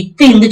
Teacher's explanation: இந்த நாக்கு ஆட்டோமேட்டிக்கா பல்ல போய் ஒரு தட்டு தட்டிட்டு வந்துரும். இத்து அப்படின்னு சொல்ல பல்ல அடிக்கும்.